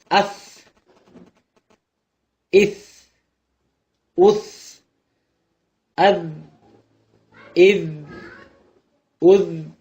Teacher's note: நுனி நாவிலிருந்தும் மேலே உள்ள நடுப்பற்களின் ஓரங்களிலிருந்தும் இந்த எழுத்துக்கள் வெளியாகும்.